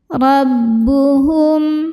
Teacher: Huruf ba tasydid tekanannya di bibir, jangan sampai ada suara masuk hidungnya ya.